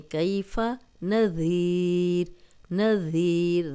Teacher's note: ذال نرم پڑھیں گے، سیٹی کی آواز نہیں آئے گی